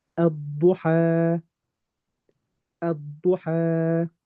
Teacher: I'm going to go straight from the alif to the dad. Little jump.